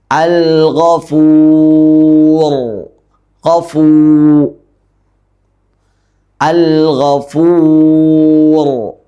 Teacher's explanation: തൊണ്ടയുടെ ആദ്യ തുടക്ക ഭാഗം അതാണ് ഈ ഗൈനിൻ്റെ മഖ്റജ്.